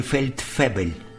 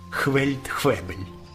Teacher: приголосну ф вимовляла як хв